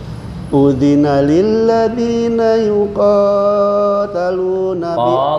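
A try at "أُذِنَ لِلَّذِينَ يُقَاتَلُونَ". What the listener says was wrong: kepanjangan 2 harokat aja.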